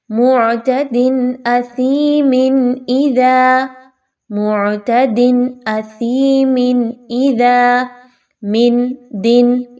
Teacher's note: یعنی آپ نون کی آواز کو بڑا کلیئر پڑھ رہے ہیں لیکن ہننا بھی نہیں کرنا، رکنا نہیں ہے یہاں پر۔ · یعنی تنوین کی آواز کو بڑا کلیئر کر کے پڑھنا ہے، جس میں کہ نون کی آواز بھی واضح ہوگی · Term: اظہار